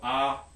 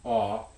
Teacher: And the classic minimal pair for varieties of English that do have a contrast would be this little portable bed versus the past tense of catch, where this vowel in cot is going to be a low back unrounded vowel, and this vowel in caught is going to be a slightly higher and rounded vowel. So ah, aw, cot, caught.